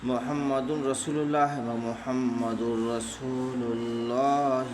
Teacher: تنوین کو بلا گناہ کے پڑھیں گے ملا کر کے، اس کو ادغام تام بلا گناہ کہتے ہیں۔